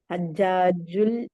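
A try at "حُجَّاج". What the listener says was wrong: ഹുജ്ജാജുൻ. ഹജ്ജാജിനാണോ ഹുജ്ജാജിനാണോ? ഹജ്ജാജിൻ എന്നുള്ള വേർഡ് പഠിച്ചിട്ടില്ലല്ലോ.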